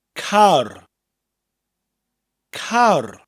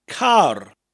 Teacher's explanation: the Welsh word for car is the same as the English but with a rolling R